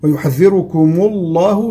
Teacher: لام اسم الجلالة سبقت بضم فهي مفخمة